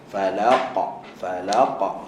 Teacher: Okey, dia lantunan sentuh lepas makhraj dia. Huruf qaf pangkal lidah sentuh soft palate. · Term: qalqalah